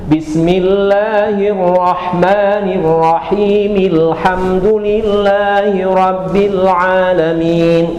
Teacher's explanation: Jadi hilang si bacaan alnya itu enggak ada a-nya karena dia hamzah wasal.